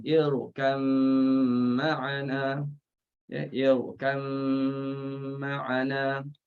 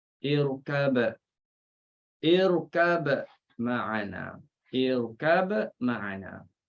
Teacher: masukkan ba dalam mim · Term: idgham